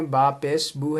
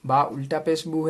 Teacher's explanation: اب یہاں پہ دیکھیں گے با پیش بو ہے، با الٹا پیش بو ہے، تو با پیش بو کو جلدی پڑھنا ہے اور با الٹا پیش بو کو ایک الف کے برابر کھینچ کر پڑھنا ہے